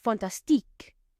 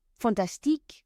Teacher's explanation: you stress the last syllable more than any other